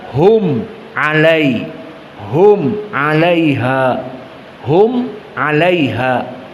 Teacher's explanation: Maka di sini idhar syafawi. Mim bertemu dengan ain. Mimnya jelas.